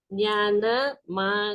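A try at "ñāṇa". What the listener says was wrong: No, not nya. There's no nya. Nya is something different. Here, na. You can see here, this. The same, but it's long. Nanya.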